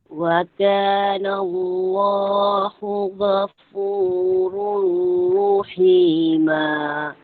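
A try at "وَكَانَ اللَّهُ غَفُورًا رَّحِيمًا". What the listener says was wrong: Kedengaran macam kakak sebut ghafuru. Ghafurur. R-O. Ghafur. Ghafurur. R-O.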